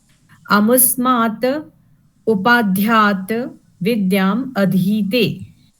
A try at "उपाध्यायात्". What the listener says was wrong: उपाध्यात होगा कि उपाध्यायात होगा? यहाँ भी तो उपाध्याय बोलते हैं ना? तो उपाध्यायात हो जाएगा ना। क्योंकि उपाध्याय तो नहीं बोलेंगे, उपाध्याय बोलेंगे ना यदि उपाध्याय है तो उपाध्यायात हो जाएगा।